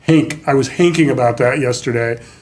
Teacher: in glasgow which has a very different way of doing it they say h instead of th sound